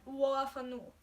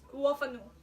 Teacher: the wool and the ah merge together sort of